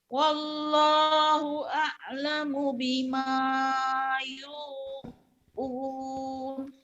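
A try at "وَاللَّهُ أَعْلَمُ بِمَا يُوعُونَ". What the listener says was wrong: bagus, tapi wallahnya ibu artikulasinya wow gitu. Jangan gitu. Ada w, ada l. Wallah.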